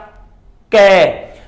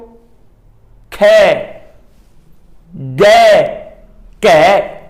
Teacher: साडे जो जीभ दा पिछला भाग है, साडे जीभ दा पिछला भाग जो साडा कोमल तालू है, गले नाल लगदा तालू है, उत्थे जीभ दा पिछला भाग टच हुंदा है ते फिर उस तो बाद इन्हां अखरां दा उच्चारण हुंदा है। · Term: कंठी धुनियां